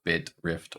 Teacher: The I high front unrounded lax also is represented with an I in many cases, so bit, rift, or flip-ing.